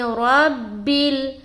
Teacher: را کو موٹا رکھیں گے کیونکہ اس کے اوپر زبر ہے، جب بھی را کے اوپر زبر ہو تو موٹا پڑھنا ہے اور اگر پیش ہو تب بھی موٹا پڑھنا ہے، لیکن اگر اس را کے نیچے زیر ہوتا تو اس کو ہم باریک نکالتے، جیسے کہ ربل ایسا پڑھتے، ربل ایسا پڑھتے زیر کی صورت میں۔